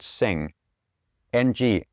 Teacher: So if you say sing and then extend the ng sound at the end that is created by the tongue going up into the top of the mouth. It pulls the the the back of the tongue out of the throat, which creates room in the throat for the vocal cords to vibrate freely.